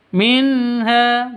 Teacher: Naqu'udu minha minha nun mati bertemu dengan ha jelas terang karena izhar halqi ya minha jelas tidak boleh disentak minha salah dengung minha salah juga harus jelas minha nun nun matinya jelas ha-nya juga jelas